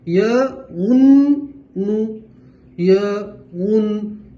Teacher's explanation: نون کے اوپر تشدید ہے، گننا بھی کریں گے، دو مرتبہ پڑھیں گے